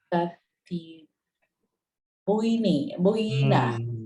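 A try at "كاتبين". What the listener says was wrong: Katibina. Nggak pakai bui. Ngapain dibui? Nggak pakai bui. Katibina. Ini jangan sampai keliru ya dengan tasnya. Kalau tasnya itu fathah dulu baru kasroh. Nunnya pasti ni.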